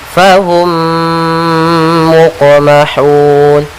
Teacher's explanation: Kemudian ada huruf qaf yang berharakat sukun, maka kita namakan dengan qalqalah, yaitu suara qafnya memantul tapi tidak ada tambahan huruf hamzah, jangan muqmahun.